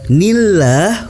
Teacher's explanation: hukum bacaannya adalah tarkik, dibaca tipis, dipanjangkan 2 harokat. Lafaz Allahnya dibaca tipis dan dipanjangkan 2 harokat.